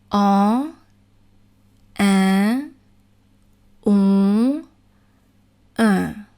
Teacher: So if I'm saying en, and I cannot hear the vowel when I pinch my nose, that means that the vowel is pronounced properly, because you are going to use your nose. The air is going to flow through your nose as you pronounce as well.